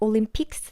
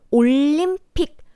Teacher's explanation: It's Olympic, but we don't pronounce the S sound at the end, like Olympics.